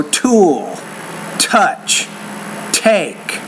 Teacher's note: work on to lesson number 12 now like the P sound the T sound needs to have a little more air